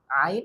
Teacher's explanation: আইন একটু ভিতর থেকে, অর্থাৎ আমাদের যে কণ্ঠনালী আছে, আমাদের যে হলক আছে, কণ্ঠনালীর মাঝ থেকে আমাদের এই উচ্চারণটা করতে হবে